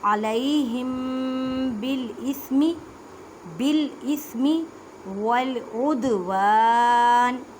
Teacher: علیہم بالاسم والعدوان، اب دال ساکن ہے، اس وجہ سے یہاں پہ کلکلا کریں گے، کلکلا کا مطلب ہے آواز کو ہلا کر پڑھنا · میم ساکن کے بعد با ہے، یہاں پہ اخفاء شفوی کا قاعدہ کرنا ہے، اخفاء شفوی میں گنہ بھی کرتے ہیں۔